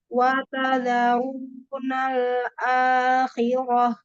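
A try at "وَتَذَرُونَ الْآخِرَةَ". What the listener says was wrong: Roh. Akhirah. Mulutnya jangan maju mulutnya.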